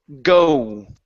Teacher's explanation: when we pronounce our O, we start off wide, okay, or halfway wide, and then we move to an oo.